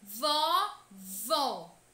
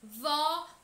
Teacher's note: o acento agudo presente nesta palavra mostra que a pronúncia desta sílaba tônica deve ser aberta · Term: som aberto